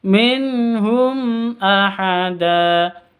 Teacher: Minhum nun mati bertemu dengan ha, ini cara bacanya jelas, terang, tidak boleh disamarkan, tidak boleh didengungkan. Minhum itu tidak boleh, yang betul minhum ahada.